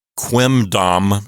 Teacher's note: you're putting your two lips together to say the M sound then you have to fully release your lips to make a D sound